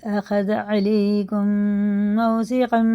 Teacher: اور یہ میم ساکن کے بعد میم آ رہا ہے تو یہ دونوں ہی غنہ کر کے پڑھیں گے